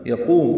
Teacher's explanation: یقوم قاف پر ہے اور قو واو مدہ ہے، 2 حرکات لمبا ہے